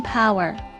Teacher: depicts a strong aspirated P as in power